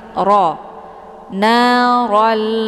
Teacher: Ro dibaca tebal. Karena ra ini berharakat fathah, maka posisi pangkal lidah ikut terangkat ke langit. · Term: Ra dibaca tebal